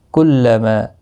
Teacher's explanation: ما الف مدہ ہے، ایک الف کی مقدار کے برابر کھینچ کر پڑھیں گے۔